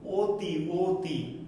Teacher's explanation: অ এর যে ধ্বনি রূপ, সেই ধ্বনি রূপটা অনেক সময় কি বা কোনো কোনো সময় ও এর মতো হয়। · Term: অ এর উচ্চারিত রূপ